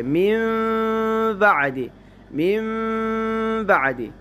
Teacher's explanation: من بعد ہے، تو یہاں اقلاب ہوگا، نون کو میم سے بدل کر غنہ کے ساتھ پڑھیں گے